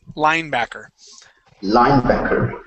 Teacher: when we pronounce this word the word is linebacker okay so the accent goes at the very beginning